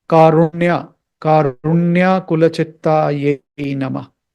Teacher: so don't say karuna it's not karuna karuna karuna karuna again it's a retroflex you have to twist your tongue upwards touch it near the ridge